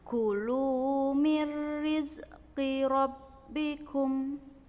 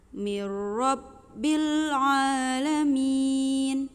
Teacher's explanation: Jadi, ketika ada nun yang tidak bersukun bertemu tasydid, membacanya lewati yang tidak bersukun. Jadi, nunnya dilewati, membacanya langsung ke huruf ra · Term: idgham